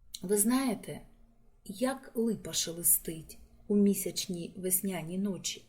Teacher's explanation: у цьому уривку асонанс тобто повторення голосних звуків а е и і · мрійності закоханості асонанс тут використовується в поєднанні з алітерацією повторенням приголосних повторення шиплячих і свистячих приголосних звуків ш ч с з передає у цьому фрагменті шелесть